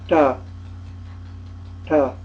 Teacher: it flexes backwards, retroflex, and touches the front of the upper palate above the teeth, at the top of the teeth. So the hard form is ta, ta.